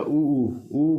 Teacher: उ उ का उच्चारण कहां से होता है होठ से होठ का प्रयोग होता है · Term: ओष